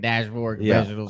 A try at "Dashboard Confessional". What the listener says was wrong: It's just one confessional. multiple Confessionals. That's just one confessional. No, it's just confessional. Yes, nailed it.